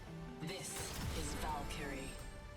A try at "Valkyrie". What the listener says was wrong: She kind of pronounced that wrong, or weirdly. Valkyrie. Yeah. Emphasis on the wrong syllable.